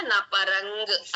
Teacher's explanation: కా ముందు వచ్చిన అనుసర్గ కాబట్టి ఉంగులాగా రావాలి. నపరం కాకుండా నపరంగ్ అలా రావాలి.